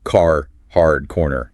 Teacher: you pronounce the R sound wherever it's written